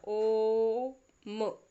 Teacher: ओ को हमने 2 बार अपने मात्रा में खींचा। ठीक है, ओ को हमने 2 बार खींचा, ओ म। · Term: दीर्घ